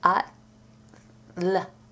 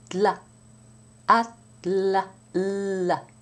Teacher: The T, the D, and the L are all pronounced with the tip of the tongue touching lightly against the back of the upper teeth.